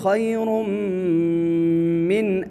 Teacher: خَيْرٌ یہاں پر ادغام بالغنہ ہوگا، تنوین ہے اور تنوین کے بعد حروف ادغام یعنی حروف یرملون میں سے میم آیا ہے، ادغام بالغنہ ہوگا۔